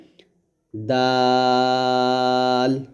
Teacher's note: জিহ্বার আগায় সামনের উপরের দুই দাঁতের গোড়ার সঙ্গে লাগবে দাল